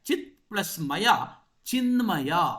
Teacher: ತಕಾರಕ್ಕೆ ನಕಾರ ಅದರದೇ ಆದ ಅನುನಾಸಿಕ ಆದೇಶವಾಗಿದೆ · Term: ಅನುನಾಸಿಕ ಸಂಧಿ